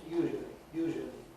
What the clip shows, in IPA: ˈjuːʒəli